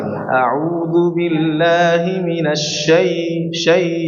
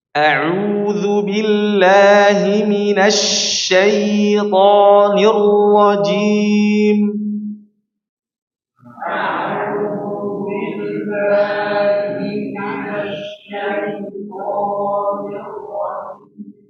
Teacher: Turunkan pada kalimat syai dengan lembut karena itu hurufnya lin. Syai dan diberikan 2 harokat ya.